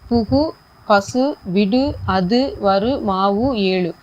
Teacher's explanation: குறைஞ்சு ஒலிக்காம ஒரு மாத்திரை அளவுக்கு முழுமையாக ஒலிக்கிறது · அந்த உகரம் ஃபுல்லாகவே ஒரு மாத்திரை அளவுக்கு ஒலிக்கும் பாருங்கள். புகு, பசு எல்லாமே நல்லா அழுத்தி தான் சொல்கிறோம் அந்த அளவுக்கு. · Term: முற்றியல் உகரம்